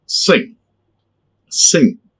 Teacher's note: When you produce these three sounds, the air comes through nose. Okay? You block the mouth. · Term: nasal sounds